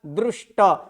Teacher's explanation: पहले मूर्धन्य श, और मूर्धन्य श होने के बाद तो है। तो त वर्ग जब मूर्धन्य से या ट वर्ग के साथ जुड़े तो उसके स्थान पर ट वर्ग यानी त के स्थान पर ट होगा